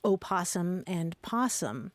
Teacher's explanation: it's easy to lose that O because that first syllable is unstressed